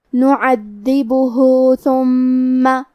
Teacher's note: ثا کی ادائیگی زبان کے سر اور اوپر والے دانتوں کے اندرونی کناروں سے ہے. حرف المیم پہ تشدید ہے تو ہمیں 2 حرف کے برابر میم کو پڑھنا ہے. · آخری میں ہا پہ الٹا پیش ہے. یہاں حکم ہے مد صلہ صغرا، مطلب ہم اپنی آواز 2 مد کے برابر لمبی کریں گے